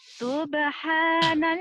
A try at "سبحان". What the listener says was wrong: So, bukan tub. So, kedengarannya kayak tub ya. Mungkin bibirnya terlalu ini. So, kedengarannya kayak tub tadi. Sub, yuk.